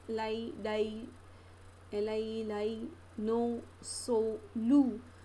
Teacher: the tip or blade of the tongue comes in contact with the alveolar ridge. Retroflex, tip of the tongue and the back of the alveolar ridge.